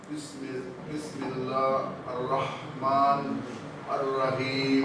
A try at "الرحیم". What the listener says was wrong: الرحیم. دیکھیں الرحمن کا ہاں آ رہا آپ کو، لیکن الرحیم میں پھر وہ ہا میں ہو جا رہا، الرحیم ہو جا رہا. الرحیم الرحیم الرحیم پہ تھوڑا پریکٹس کریں آپ.